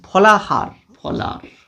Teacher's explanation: যেখানে আমরা লক্ষ্য করি যে শব্দ মধ্যস্থ হ ধ্বনিটি লোপ পায়। যেমন আমরা যদি বলি ফলাহার, ফলার উচ্চারণে চলে যাবে, অর্থাৎ এই হটি সেখানে লোপ পেয়ে যাবে।